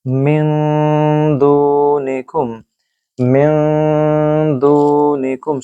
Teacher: you have to do gunna a bit longer, but make sure it is coming from your nose.